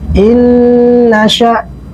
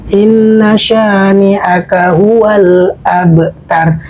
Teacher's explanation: terdapat tasdid maka harus ditekan